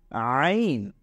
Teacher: এটা ভেতর থেকে চাপ দিয়ে পড়তে হয় আইন গলার ভেতর থেকে আনতে হয়